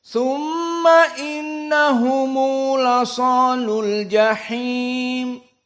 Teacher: Maka kedudukan dari mad di sini silatul mim al-jama' hanya 2 harokat. Tidak lebih dari itu.